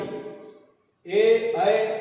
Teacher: ए ऐ ये कंठ और तालु से स्वर बोले जाएंगे, इसलिए इनका है कंठ तालु, दोनों के मिश्रण से योग से बोले जाएंगे।